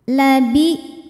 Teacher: suaranya tertahan Hamzah punya sifat namanya syidah